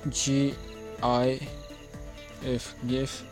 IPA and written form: ˈɡɪf (GIF)